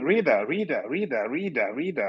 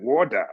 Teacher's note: when there's a vowel before and after T is pronounced D